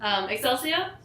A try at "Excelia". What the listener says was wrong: Excelia. There's no S.